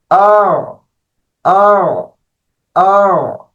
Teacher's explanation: دوسری حمزہ کو نرمی کے ساتھ پڑھنا ہے